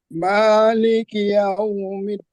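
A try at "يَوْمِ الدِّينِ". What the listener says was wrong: Iau diperhalus, Pak. Yaumiddin. Jangan ditekan. Yau.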